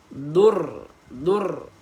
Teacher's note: Pada hujung lidah kita bila bertemu dengan lilang atas. Nah, huruf ra di kawasan hujung lidah dia akan tekan dekat gusi atas. dan dia ada rasa getaran pada hujung lidah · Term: takrir